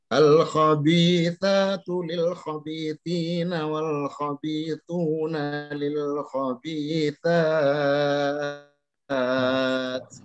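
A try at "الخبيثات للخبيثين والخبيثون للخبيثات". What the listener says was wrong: Mumtaz, ahsanta.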